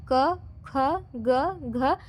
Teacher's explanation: उच्चारण स्थान कहां पर हो रहा है कंठ हो रहा है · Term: क वर्ग